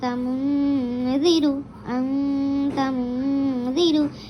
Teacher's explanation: নাকের মধ্যে আওয়াজটাকে নিয়ে গিয়ে আমরা মানে গুন্নাহ করে পড়তে হবে, এক আলিফ পরিমাণ টেনে গুন্না করে পড়তে হবে। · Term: গুন্না ও ইখফা